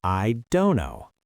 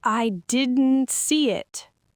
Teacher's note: The air stops abruptly after the n.